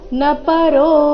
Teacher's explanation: ಇಲ್ಲಿ ನ ಪರೋ ಈ ರೀತಿ ನ ದೀರ್ಘ ಮಾಡಬಾರದು